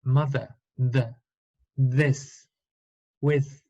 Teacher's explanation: Opuesto al sonido the, tengo vibración en mis cuerdas vocales, por lo tanto es un sonido voiced